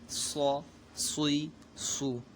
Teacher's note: صاد یہ سیٹی والا حرف بھی ہے اور حروف مستعلیہ میں سے، جب اس کو ادا کریں گے تو سیٹی کی طرح آواز بھی نکلے گی اور اس کو پور یعنی موٹا بھی پڑھنا ہے